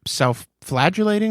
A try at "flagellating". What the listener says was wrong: Flagellating. You said flagulating. No, you didn't. You didn't do that. Nah, you didn't do that.